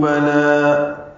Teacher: بلا لام کو بھی 2 حرکات لمبا کرنا ہے